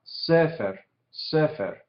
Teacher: Esta palabra sefer, el énfasis cae en la primera sílaba, entonces se indica con este tipo de acento, en este caso. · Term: sílaba tónica